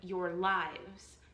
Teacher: This set is referred to as a foot. That set of two syllables is an unstressed syllable followed by a stress syllable. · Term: An I am